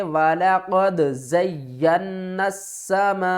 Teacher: بڑی مد ہے، اس کو 5 الف کی مقدار کھینچ کر پڑھیں گے